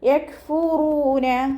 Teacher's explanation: 2 count നീട്ടി കൊടുക്കുക കേട്ടോ. കാഫ് സുക്കൂനാവുമ്പോൾ കുറച്ചേറെ പുറത്തോട്ട് പോകുന്ന സൗണ്ട് കൊടുക്കുക. യക് അതുപോലെ ഉച്ചരിക്കണേ.